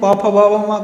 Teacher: मतलब पु वर्ग का उच्चारण ओष्ठ से होता है